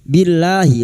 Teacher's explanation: lam jalalah yang didahului kasroh dibaca tarkik. Billahi lanya kita panjangkan 2 harakat.